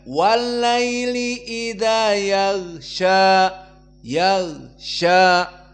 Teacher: maka gnya tidak boleh keluar nafas